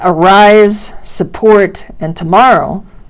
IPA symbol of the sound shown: Ә